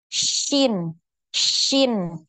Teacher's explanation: Nah, jadi bukan sin gitu ya bacanya, tapi di tengah lidah. Tengah lidahnya dinaikkan ke langit-langit. Shin, shin.